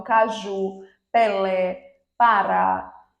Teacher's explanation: todas são oxítonas todas possuem a última sílaba tônica